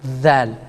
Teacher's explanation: And the dhal, which is they bring the tongue to and touch the front upper teeth of it, and then it touches slightly sticky, comes out.